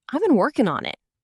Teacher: The ing ending often becomes just in fast speech